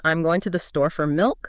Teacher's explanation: You are squeezing the small words to keep the beat steady. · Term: stress timed rhythm